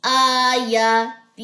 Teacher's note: صرف تا کی زیر لمبی نہیں ہوگی، باقی سب حرکات لمبی کرنی ہے